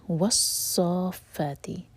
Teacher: صا ہم 6 حرکہ لمبا کھینچیں گے، یہ ہے مد لازم کلمی مثقل، کلمی یعنی کہ ورڈ کے اندر، ورڈ کے میں یہ مد آ رہا ہے اور مد کے بعد ہے شدہ، تو اس لیے مثقل.